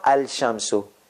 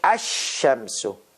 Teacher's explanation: so the lamb sound goes away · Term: lam has disappeared